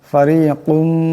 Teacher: কাফের উপর দুই পেশের তনবিন, এরপরে মিম আসছে, ঈদগাম হয়ে যাবে, ঈদগামের একালি পরিমাণ গুণনা হবে।